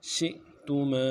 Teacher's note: حمزہ کے اوپر ساکن ہے جزم ہے جھٹکا دیں گے ، تا کو نرمی سے ادا کریں گے، میم کے بعد